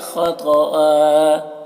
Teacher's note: 2 زبر ہے تو ایک زبر کے ساتھ الف پڑھیں گے کیونکہ یہاں پر وقف کر رہے ہیں، اور خا طا دونوں کو پر پڑھیں گے۔